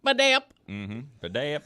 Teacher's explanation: the phonetic emphasis is on the middle syllable